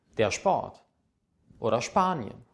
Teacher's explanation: zusammen ist analog mit S und T zusammen es wird ausgesprochen es und P zusammen wird wie ein schp ausgesprochen